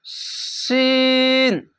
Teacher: যা বাংলাতে দেখেন মুরগি জ্যা আকার যা এক আলিফ টেনে পড়বেন শিন তিন আলিফ টেনে পড়বেন